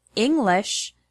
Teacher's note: the word English has the stress on the first syllable, ing.